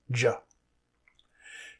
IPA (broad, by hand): dʒ